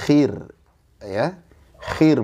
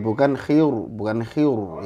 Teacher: ro sukun itu ada aturannya ketika diawali kasrh itu tipis